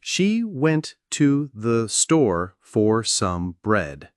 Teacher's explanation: The stressed words here are went, store, and bread. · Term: sentence stress